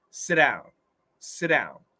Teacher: in this situation sit becomes a ghost t it disappears